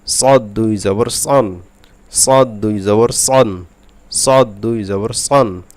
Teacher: সদ মোটা হবে যেহেতু ইস্তেআলার অক্ষর এই জন্য সদ মোটা করে পড়তে হবে।